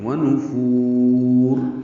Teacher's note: اور ملانا ہو تو را باریک ہے اور آگے اظہار ہوگا